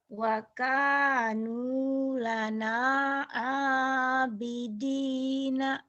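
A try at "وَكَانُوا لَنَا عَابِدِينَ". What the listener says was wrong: Udah bagus, cuman ainnya belum dapat gini ya. Wakanu lana telan sesuatu, nelan sesuatu. Nelan ya. Bidina.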